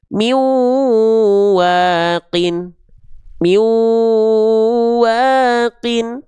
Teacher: Nah, itu yang disebut dengan idgham. Meleburkan bunyi n menjadi tidak ada karena sudah masuk ke huruf berikutnya. · teman-teman mempertemukan antara bunyi konsonan n dengan bunyi konsonan au. Maka ada idgam bigunah. Diidgamkan bunyi-nya ke bunyi au.